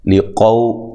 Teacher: اچھا، ایک الف کی مقدار کے برابر لمبا کرنا ہے. لقو قاف کو موٹا، واو لین ہے، لام باریک ہے